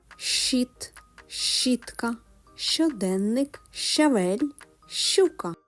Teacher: Буква одна, а звуків два: Ш та ч. Обидва приголосні.